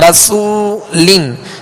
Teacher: اور آگے وہ مدہ ہے رسو، سین کو سیٹی کی آواز میں پڑھیں گے مگر باریک. رسولن سین پر پیش بھی ہے لہذا ہونٹوں کو کامل گول کر کے ادا کریں گے.